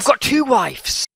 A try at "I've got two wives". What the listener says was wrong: No, with a V. Say it with a V. You're saying it with an F. A V and an F have a very different sound.